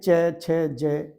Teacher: तो यह जो हमारी जीभ है वह तालु के साथ टच करती है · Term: तालव्य